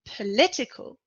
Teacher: In political, the stress is on the second syllable.